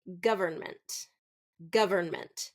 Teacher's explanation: the middle syllable is often reduced in fast speech so instead of govern government it would be government government just · So often the middle syllable is often reduced in fast speech. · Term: first syllable stress